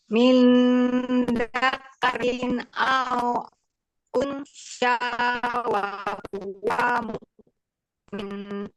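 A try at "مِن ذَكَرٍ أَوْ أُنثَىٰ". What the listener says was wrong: Sa, coba unsa, sa, sa. sin, bukan sya, tapi sa.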